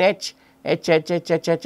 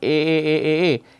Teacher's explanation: the H sound in English is essentially a voiceless ah so H is actually a voiceless a sound that you get · So, H is actually a voiceless AH sound that you get. Now, alternating between H and A, one finds the vocal fold vibrate for AA and not for H.